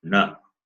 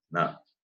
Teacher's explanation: Cerebral na is you have to touch the roof of your mouth na, and this na touches just above the upper teeth na.